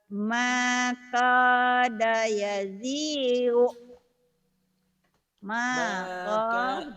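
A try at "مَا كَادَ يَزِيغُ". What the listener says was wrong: makada, jangan makoda, makada. A jangan jadi bikin O. Makada yazigu.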